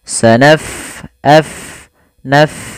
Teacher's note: Pada lafal bacaan sanafrughu, fa-nya kita alirkan nafasnya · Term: huruf fa